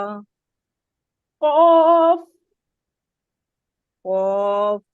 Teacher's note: देखिए खौफ का मखरज जो है ना बहुत आसान है, खौफ का मखरज सीधा वही है कि जबान की जो जड़ है ना वो ऊपर का जो तालू का नरम हिस्सा एग्जैक्टली उसके ऊपर, उस पे चिपक जाती है